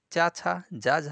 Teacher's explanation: च वर्ग के जितने वर्ण होते हैं चा छा जा झा या इन सभी का उच्चारण स्थान तालू होता है